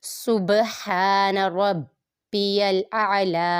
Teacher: سین متحرک، با ساکن پہ قلقلہ ہو رہا ہے، قلقلہ خوب ظاہر ہوگا